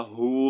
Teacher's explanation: جب ہم اس کو ساکن کریں گے تو واو مدہ ہو جائے گا، ہو پڑھیں گے، ہوو نہیں پڑھیں گے، ٹھیک ہے.